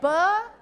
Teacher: When you say buh, then you're adding a schwa sound to b. And anytime you add a schwa sound to b, you are doing fa-lata.